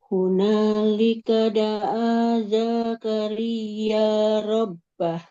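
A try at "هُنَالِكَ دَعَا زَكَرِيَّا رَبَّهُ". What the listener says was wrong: Oke, huruf zainya fathah. Di depannya tidak ada alifnya ya. Nggak boleh dipanjangkan. Tidak Zakaria, tapi Zakaria Rabbah.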